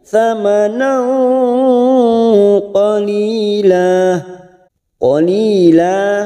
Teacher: thamana fathatain yang bertemu qaf, namanya bacaan ikhfa hakiki, kita samarkan bunyi fathatain. Thamana qalila, qalila, li ada kasroh bertemu ya sukun 2 harokat, la fathah tanwin yang dibaca wakaf mat iwad 2 harokat kita panjangkan.